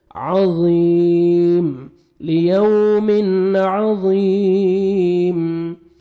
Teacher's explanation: ज़ा को मोटा करके पढ़ना है, और या मद है 1 सेकंड ज़ा को खींचना भी है